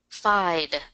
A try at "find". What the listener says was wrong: Okay, so what I'm hearing is I'm not hearing that N in there. So I want to get that N in there. Find. Okay, so with those two words, I wasn't hearing that N sound in there. I was just saying sound and find. So let's get that N in there.